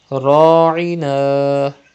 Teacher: Pronounce ra with thicker voice and stretch alif madda.